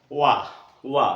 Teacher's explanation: यहाँ ओंठ गोलाई में आएंगे, पूरी तरीके से ओंठ आपस में मिलेंगे नहीं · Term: दंतोष्ठ